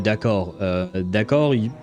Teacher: D'accord, I've never heard anyone pronounce the D at the end of d'accord. That, at the end of that word, the D is silent. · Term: silent letters